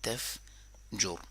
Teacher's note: جو میں نے جور کر کے روک لیا نا، تف جور، تو اگر را کو روکنا ہے تو بھی موٹا پڑھیں گے کیونکہ فتحہ ہے اس کے اوپر ، تو اگر اس کو کنٹینیوسلی پڑھنا ہے تو بھی موٹا